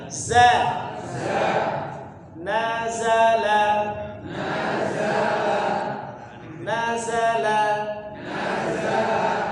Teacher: Tengah lidah dengan langit-langit jadi bunyinya memang Mirip tapi dia beda kalau Za itu lebih menempel gesekan lidah dengan langit itu lebih terasa